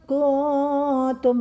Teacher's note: Nun mati bertemu dengan kaf, dibaca ikhfa, artinya samar.